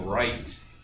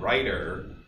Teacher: English flapping and this is the alternation that occurs in English between write with a good voiceless T at the end and writer where you get that quick sort of D like sound that is in fact a tap in the middle of the word so phonologically condition alternations are